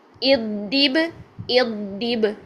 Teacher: را کو باریک رکھا کیونکہ را کے نیچے کسرہ ہے.